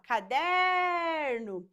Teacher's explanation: perceba que a sílaba que se estende é a sílaba der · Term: sílaba tônica